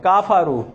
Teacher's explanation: کافرو, دیکھا جاتا ہے عام طور پر کچھ لوگ یوں پڑھتے ہیں کافرو. کافرو غلط ہے کیونکہ کاف کے بعد آپ الف بنا رہے ہیں. کفرو کفرو.